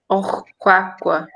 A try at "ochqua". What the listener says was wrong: ochqua. So again, it's at the end, so it's the O sound instead of the I sound. Ochqua.